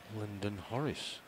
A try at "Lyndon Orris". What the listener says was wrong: Lyndon Orris. There's no H.